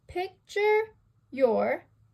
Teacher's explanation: you have a stressed, unstressed, unstressed. That makes it 1 set. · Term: dactyl